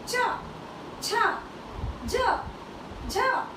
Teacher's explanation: ये हमारी जो जीव है तालू को स्पर्श करती है तालू को टच करती है अर्थात इनका जो उच्चारण स्थान है वो है तालव्य अर्थात तालू